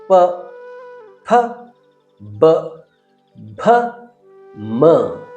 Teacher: ತುಟಿಗಳ ಸಹಾಯದಿಂದ ಉಚ್ಚರಿಸುವಂತಹ ವ್ಯಂಜನಗಳು ಇವು. ಮೊದಲನೇ ಮತ್ತು ಮೂರನೆಯ ವ್ಯಂಜನ ಅಲ್ಪಪ್ರಾಣ ವ್ಯಂಜನ, ಎರಡು ಮತ್ತು ನಾಲ್ಕನೆಯ ಅಕ್ಷರ ಮಹಾಪ್ರಾಣ ವ್ಯಂಜನಾಕ್ಷರವಾಗಿದೆ. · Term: ಪ ವರ್ಗ